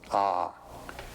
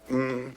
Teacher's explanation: you start the back of the mouth ah and then ooh you fill the mouth and M closes at the mouth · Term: om